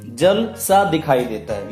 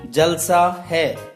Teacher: इस जल सा को अगर हम इकट्ठा करके बोलते हैं तो अर्थ परिवर्तन हो जाता है